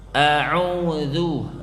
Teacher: huruf ain itu tidak keluar dari lubang hidung kita, tidak keluar dari hidung, ya, tetap dia keluar dari mulut